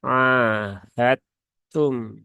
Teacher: Idghamnya pun juga idgham yang kamil ya, yang sempurna. Maka huruf dalnya ini paling gampang adalah dileburkan ya, dileburkan masuk ke dalam huruf ta. Sehingga langsung saja ke huruf taknya ketika membaca ahadtum ya, bukan ahadtum tapi ahadtum. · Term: idgham mutajanisain